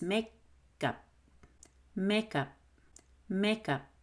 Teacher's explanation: do you hear the gup i didn't say make cup that's too careful